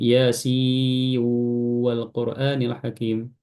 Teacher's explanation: hukumnya nun sukun ketemu waw idgham bi gunnah